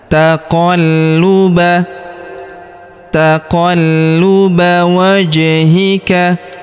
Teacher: Qad nara taqalluba. Perhatikan huruf lu kita tahan dan tekan karena terdapat tanda tasydid di atasnya.